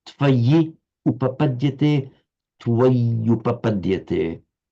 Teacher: So by the normal rules of sandhi, which we see operating here, tvayi, in you, upapadyate, we've got a word ending in an I that I've just highlighted here, where the cursor is, followed by u, so that I, the final vowel I, has to become a y because of the following u, and that creates a double y